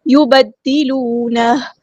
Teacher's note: دال یہاں پہ تشدید والا ہے تو دھیان سے ادا کرنا ہے، ایک بار ساکن کر کے ایک بار اس کی حرکت کے مطابق ، واو مد آیا تو مد اصلی کریں گے، 2 کاؤنٹس